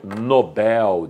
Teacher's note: como esta palavra não tenha assento adivinha então o que acontece a sílaba tônica passa a ser a última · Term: oxítona